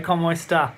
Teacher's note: in Murcia, of course, they cut the S's off. So they speak informally, but they cut the S off.